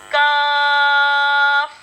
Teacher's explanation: इसका मखरज होगा ज़बान की जड़ और तालु के सख्त हिस्से से ये अदा होता है